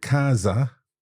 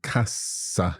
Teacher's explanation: it's a z sound there, casa, and then cassa. It's an unvoiced consonant at that point. Yeah. But it's also sort of longer, isn't it?